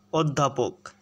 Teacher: অ এর উচ্চারণটা ও এর মত উচ্চারিত হচ্ছে